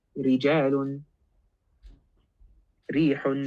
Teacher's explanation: If the ra has a kasra, then it is maksur, it is going to be light. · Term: light ra